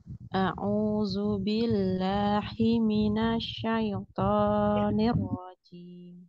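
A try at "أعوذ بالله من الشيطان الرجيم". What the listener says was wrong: Nah, coba makhrajnya diucapkan dengan benar ya, makhraj ya. A'udzu billahi ya, billahi. Nah, ini bawa tenggorokan hi-nya ya, jangan yang tengah ya. Minasyaitonir rajim. Rojim ini dia termasuk ke mat arid lis sukun ya, bisa 4 ya, 2 4 6.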